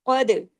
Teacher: दाल पे कलकला होगा काफ पे नहीं दाल पे कलकला होगा क्योंकि काफ के पास तो ज़बर है